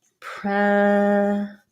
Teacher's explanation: in present the noun it'll sound like pre-zent because the e is stressed